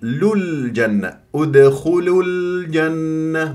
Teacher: راح نحذف هذه الواو راح تبقى بس عندي لام مضمومه منع الالتقاء الساكنين مع لام الجنه فصير لجن للجنه ادخلوا الجنه